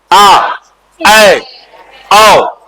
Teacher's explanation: विवृत जिसमें सबसे ज्यादा मुख खुलेगा